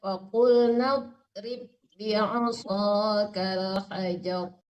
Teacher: dotnya nggak boleh dipantulkan ya, jangan nado, tebal tapi di dalam nggak boleh mantul ya